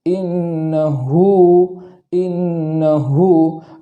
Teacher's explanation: ہا پر الٹا پیش ہے وہاں ایک الف کے برابر تاخیر کریں گے، اس لیے کہ الٹا پیش جو ہوتا ہے وہ واو مدہ کے قائم مقام ہوتا ہے۔